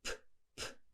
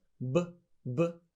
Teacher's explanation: p, p, no vibration is unvoiced. B, b, vibration is called voiced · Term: paired consonants